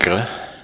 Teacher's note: The G sound, if you practice it, G, the G is in the back of the throat.